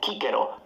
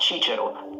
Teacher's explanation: Classical Latin was always pronounced like a K.